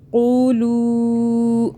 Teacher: قاف کو موٹا پڑھیں، لو کو کھینچا کیونکہ چھوٹی مد آ رہی ہے، 3 الف کے برابر کھینچنا.